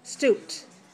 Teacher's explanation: if it's a past tense ed ending, the sound p is voiceless. So ed is also voiceless.